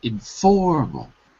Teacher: The stress is on the second syllable, and there's only 3 syllables.